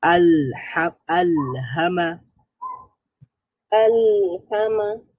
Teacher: লাম হচ্ছে মুতাওয়াসিতা বাইনা তাহলে এখানে আওয়াজ বন্ধ হবে না জারি হবে না